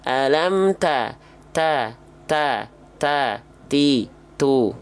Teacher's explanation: sudah ketahui sebelum-sebelumnya hams itu artinya mengalirkan nafas ya betul-betul mengalir tapi kalau untuk huruf ta dia bukan mengalir nafas kadar hamsnya kadar nafasnya Hanya berupa percikan-percikan nafas nafas saja